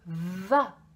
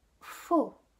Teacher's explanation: Il faut bien insister sur la vibration et on peut faire sentir également à l'enfant, donc ici, la sensation de vibration qu'on a, puisqu'en effet, les deux lettres, vous voyez, se prononcent vraiment de la même manière avec la bouche. Et la seule différence, ça va être la vibration.